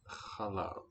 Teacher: Okay, milk is chalav. With that raspy H one.